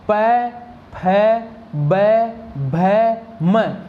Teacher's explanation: इन प वर्ग के पांचों वर्णों में मेरे होठ आपस में एक दूसरे से जुड़ते हैं